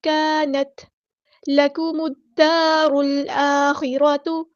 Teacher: میم کو ہم نے دال کے ساتھ ملا دینا ہے، حمزۃ الوصل ہمارا ڈراپ ہو جائے گا۔ لام یہاں پر لامی شمسی ہے، اس کو ظاہر نہیں کریں گے۔